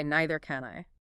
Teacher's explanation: The weight and the empathy are entirely resting on the word can. · to sound natural, you must place heavy vocal stress on the auxiliary verb itself.